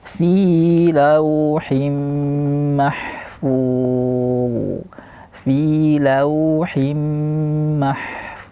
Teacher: ada mengalir bunyi rakawah di huruf D yang terakhir · berhenti di huruf dha secara rakhawah, mengalir sifat suara dha dengan tebal karena dia huruf isti'la